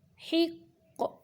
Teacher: قاف قلقلہ کریں گے کیونکہ قاف قلقلہ حروف میں سے ہے، یعنی حرکت دیتے ہیں ساکن کرتے ہوئے قلقلہ حروف کو۔